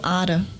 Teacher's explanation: entonação acaba ficando no primeiro A